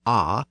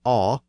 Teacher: And the spellings in the poem indicate that the dialect used the Old English long A sound, ah, rather than the aw or o sounds that emerged in the South